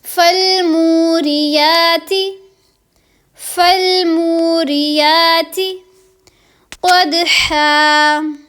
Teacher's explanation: یہاں پر منہ کو بھی لمبا کریں گے اور ری کو لمبا نہیں کریں گے، اور یہاں پر یا کو لمبا کریں گے اور تی کو لمبا نہیں کریں گے، ٹھیک ہے؟